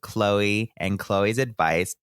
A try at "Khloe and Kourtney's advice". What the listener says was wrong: are you that self-centered that you just read Khloe twice? No, you said Khloe and Khloe's advice.